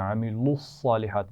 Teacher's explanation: صاد موٹا ہوگا، لام کی آواز کو موٹا نہیں کرنا